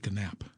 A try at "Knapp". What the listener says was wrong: It's Knapp. The K is silent.